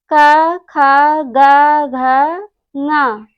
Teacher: का, खा, गा, घा, ङा और हा विसर्ग का उच्चारण स्थान कंठ होता है, क्योंकि जब इनका हम सब उच्चारण करते हैं तो कंठ की सहायता से करते हैं।